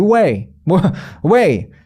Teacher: 뒤에 강세만 제대로 발음해주고 앞에 그냥 으 소리 비슷하게 내주면 원어민들은 오케이 뭔지 알겠어, 이렇게 캐치가 된다는 겁니다. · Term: 슈아